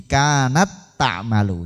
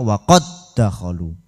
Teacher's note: jika diidghamkan sifat qalqalah dan hamasnya hilang